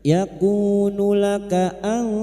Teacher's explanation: Yakunu laka an, nun sukun bertemu ta ikhfa hakiki. Kita samarkan bunyi nun sukun dan mendengung selama 3 harokat.